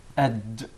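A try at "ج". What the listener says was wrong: Not ag. There is no gim in Arabic. It is aj. Adj. It seems like it comes from the middle of the mouth. Adj. Adj.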